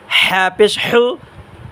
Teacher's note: হা পেশ হু গলার মাঝখান থেকে উচ্চারণ হবে